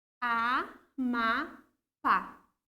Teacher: Minha última sílaba tônica, pá. Se ela é a minha última sílaba tônica e é acentuada ainda para facilitar a minha vida, então aqui nós temos uma oxítona.